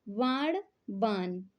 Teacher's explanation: ण ध्वनि जो है ना में बदल जाती है